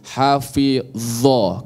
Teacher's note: Ya, itu ujung lisan sama-sama, tapi sifatnya berbeda. Kalau dho itu dia tebal, isti'lah atau tafkhim. · Dha sama dho sama-sama di ujung lisan menyentuh ujung gigi seri.